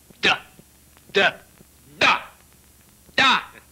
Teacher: la consonne d par exemple se prononce en donnant du bout de la langue au-dessus des dents d'en haut